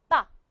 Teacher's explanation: We say ba. You stop the airflow. Why? Because you close your lips.